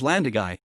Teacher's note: the accent signifying that the last syllable is stressed as opposed to the last but one the usual pattern